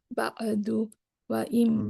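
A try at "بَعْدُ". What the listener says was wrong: বাদু, আইনের সুকুনটা একটু সফট হবে, বাদু।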